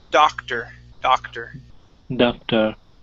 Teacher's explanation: instead of an O-R sound, we give it an E-R sound